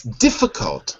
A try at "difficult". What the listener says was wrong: one little pronunciation issue which is the L in difficult we don't say it it's silent